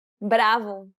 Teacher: this consonant sounds like a combination between a d sound and an r sound · the key here is to make sure that the tongue strikes the gum ridge very very quickly striking in a down up fashion may help to pronounce this